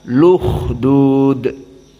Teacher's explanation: Maka al-ukhdud dalam keadaan dinaql, dihilangkan hamzahnya, maka dipindahkan harokat dari hamzah yang fathah, hamzah yang dhammah menjadi dhammah kepada lam, luhdud.